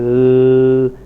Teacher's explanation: the closure is not complete in the oral cavity, but is there only in part of the oral cavity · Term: partial closure